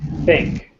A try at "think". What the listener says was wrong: I'm not hearing the K.